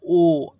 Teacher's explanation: एक अंदर से आवाज़ आ रही है, और एक क्या हो रहा है, मुंह जो हमारा ओठ जो है गोल हो रहा है। तो ये कंठ ओष्ठ होना चाहिए।